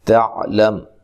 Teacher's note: تا کو باریک پڑھنا ہے، عین کو واضح نکالنا ہے، لام کو باریک۔